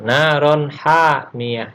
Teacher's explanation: naron adalah tanwin bertemu dengan ha. Ingat, ha adalah berasal dari tenggorokan.